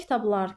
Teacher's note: Vurğu sonuncu hecaya düşür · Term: heca vurğusu, Heca vurğusu